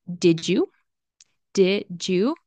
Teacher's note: the D followed by a Y sound, D, Y sound turns into a J sound